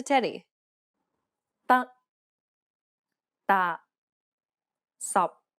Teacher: the final p t and K are unreleased in Cantonese this means that you must not release a burst of air when pronouncing this sound it's as though you're cutting the sound off listen to Teddy